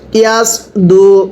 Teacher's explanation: সদটা উচ্চারণের সময় ঠোঁটগুলো হালকা গোল হবে